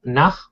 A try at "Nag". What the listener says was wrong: Okay, so again, when I hear you say nag, it sounds like nach. you really want to nag, g. G. Try to make this sound g. Nag. Nag.